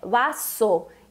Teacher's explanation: mesmo sendo um S só, o som é forte como dos nossos dois S's